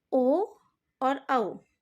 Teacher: ओ और औ वर्णों के उच्चारण में कंठ और ओष्ठ दोनों का सहयोग होता है, उनके सहयोग से ही ओ और औ स्वर का उच्चारण होता है, अतः ये कंठोष्ठ स्वर भी कहलाते हैं।